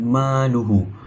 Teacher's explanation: Hukum membacanya dipanjangkan dengan 2 harakat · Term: mad silah qasirah